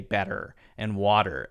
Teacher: And that's an oversimplification, of course, but generally speaking, Americans are more likely to hit that T as a D when there's that vowel sound following the T in the case of better and water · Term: light D sound